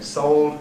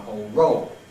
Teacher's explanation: Along with the loss of one allophone, 11b, there's the rise of another one. This is the O used before dark L.